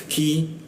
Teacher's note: lidahnya diturunkan sehingga rongga udara terbuka dan ada hembusan udara ketika dibacanya